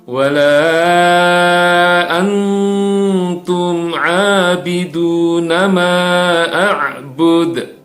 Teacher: harus ditahan harus disamarkan dan harus mendengung ya perlu beberapa detik untuk ditahan